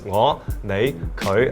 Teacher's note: they're all tone number 5, all the scoopy tone